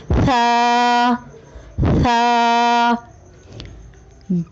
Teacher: ثا کی ادائیگی میں زبان کی نوک کو سامنے والے اوپر کے دو دانتوں کے اندرونی کناروں سے نرمی سے لگا کر باریک آواز میں پڑھیں